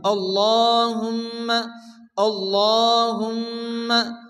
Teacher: শুরুতে জবর আসছে আল্লাহর লামকে ল উচ্চ করে পড়তে হবে হুম্মা মিমের উপরে তাসরিন মিম গন্না ওয়াজিব